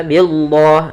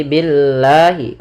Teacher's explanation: Setiap lafal Allah bila didahului dengan huruf berharakat kasrah, maka dinamakan dengan lam tarqiq, yaitu lam yang lam tipis, tidak dibaca dengan lam tebal. Sehingga di sini bukan lagi billah tapi billahi.